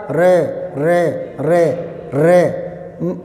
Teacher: फिर है प्रकंपित, हाँ रे प्रकंपित, और मैंने यूं याद किया था रे रे रे रे, कुछ तो मैं जानबूझ कर रहा हूँ आपको समझाने के लिए, रे रे जीभ में हल्का कंपन सा होता है, ठीक है ना, प्रकंपित